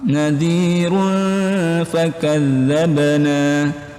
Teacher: Ifa hakiki karena ada domah bertemu dengan domatain bertemu dengan fa, itu ifa hakiki, disamar-samarkan.